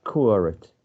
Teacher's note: So I think it has curate 2 syllables, curate, and the primary stress goes in the first syllable